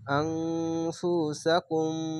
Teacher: আনফুসাকুম, হামজা নুন যাবার আং, ফা পেশ ফু, আংফু, সিন যাবার সা, আনফুসা, কাফ মিম পেশ কুম, আনফুসাকুম। এটি হচ্ছে ইকফা গুন্না, বাংলা অনেস্কারের মতো নুনটিকে ধরবে আং, এভাবে।